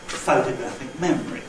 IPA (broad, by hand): ˈphotographic ˈmemory